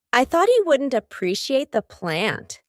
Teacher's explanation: For each of those T's, my tongue is stopped at the top of my mouth. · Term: stopped T